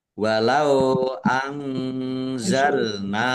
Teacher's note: Nun sukun bertemu dengan huruf za. Bacaan ikhfa dibaca samar-samar.